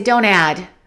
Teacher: Let's eliminate that T of don't. We say don't add.